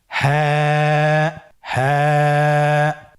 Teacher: হা হরফটি উচ্চারণের ক্ষেত্রে অবশ্যই বারিক হবে এবং এক আলিফ টেনে পড়তে হবে।